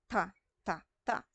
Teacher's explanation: Nagdidikit yung dila o dumidikit yung dulo ng dila sa ngipin. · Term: Pangipin